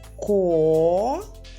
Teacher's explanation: Ми чуємо приголосний твердий з всередині слова